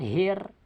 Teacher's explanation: harus kedengaran getarnya itu walaupun sedikit. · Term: takrir